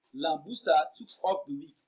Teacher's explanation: The emphasized words are took off.